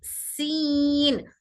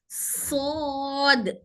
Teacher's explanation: दोनों को भी सीटी की आवाज आएंगी, लेकिन सीन बारीक पढ़ेंगे और सौद मोटा पढ़ेंगे